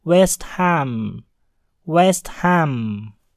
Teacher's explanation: H pada kata ham dibunyikan dengan jelas dikarenakan ham terpisah dengan kata west, sehingga berbunyi West Ham.